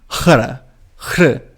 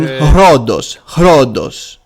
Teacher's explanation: As for ro, when it is placed in the beginning of a word, it is aspirated as well, the heavy breath preceding the consonant.